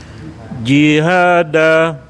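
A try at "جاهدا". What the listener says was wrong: Danya panjang Bapak.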